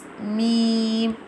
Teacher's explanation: pronounced from the dry part of both lips,